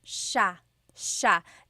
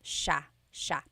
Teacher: The S-I-Y combination makes the sh sound in Tagalog.